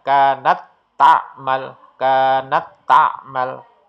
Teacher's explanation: tak yang bersukun ini seolah-olah tidak ada